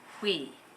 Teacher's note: He's using very fast air once again. Notice that the back of your tongue is high, while the tip of the tongue is low behind your bottom teeth.